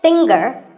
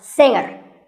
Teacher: Now, we say finger, we say the G. Younger, again with the G, but singer, no G.